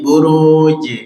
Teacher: Qalqalahnya jangan dikasih hamzah sukun